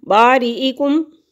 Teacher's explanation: فتوبو الی، کھڑی زبر ہے، 1 الف کے برابر لمبا کریں گے۔ باریکم، کاف باریک پڑھیں گے، میم ساکن ہے، اس کے بعد با اور میم کے علاوہ کوئی بھی لفظ آ جائے تو اظہار شفوی ہوگا